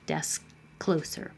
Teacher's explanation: You won't hear that final K.